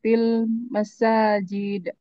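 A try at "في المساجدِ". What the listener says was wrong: fil masajid itu. Ada kasrah setelahnya kan?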